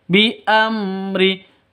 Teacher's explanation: Mim mati bertemu dengan ro. Jelas terang. Mim sukunnya jelas. Mim matinya jelas, ro-nya juga jelas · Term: izhar safawi